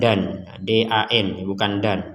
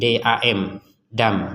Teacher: Nah, kalau tanwin ketemu ba, maka menjadi dam.